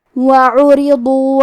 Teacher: کلمت عرضوا میں عین کی ادائیگی حلق کے درمیان والے حصے سے ہے اور کیونکہ اس پہ پیش ہے اور را کے نیچے زیر ہے تو ہمیں یہ دونوں حرکات کو ظاہر کرنا ہے.